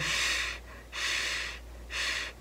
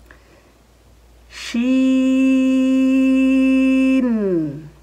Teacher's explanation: جو ہماری زبان ہے اس کا جو بیچ والا حصہ ہے، ٹھیک ہے، اس کے مقابل اوپر کا تالو، یہاں سے شین ادا ہوتا ہے، اور شین کو جب ہم ادا کرتے ہیں تو ایک آواز آتی ہے ش ش ش، اس کو بولتے ہیں صفت تفشی، ٹھیک ہے۔ جب بھی شین کو آپ پڑھیں اس صفت کے ساتھ ادا کریں، اور آخری بات شین کے متعلق یاد رکھیں کہ شین کو ہمیشہ باریک پڑھا جاتا ہے۔